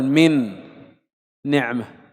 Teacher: الحرف الأول نون فيه غنة، والحرف الثاني أيضا نون فيه غنة، كلا الحرفين فيه غنة.